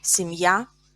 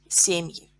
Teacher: Я is stressed in singular. Семьи. Е is stressed in plural.